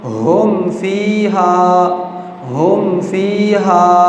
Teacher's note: میم ساکن کے بعد فا آ گیا ہے، اور جو فا ہے یہ با اور میم کے علاوہ حرف ہے، تو یہاں پر کیا ہو رہا ہے اظہار ہو رہا ہے، یعنی ہم آواز کو ظاہر کر کے پڑھ رہے ہیں، ناک میں چھپا نہیں رہے، ہم پڑھ رہے ہیں ہم فیہا، ہم فیہا، ایسے نہیں پڑھ رہے ہم فیہا، ایسے نہیں پڑھ رہے۔